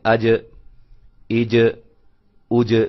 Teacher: زبان کا جو درمیانہ حصہ ہے جب تالو کے ساتھ اوپر چمٹتا ہے، ملتا ہے، تو وہاں سے جیم ادا ہوتی ہے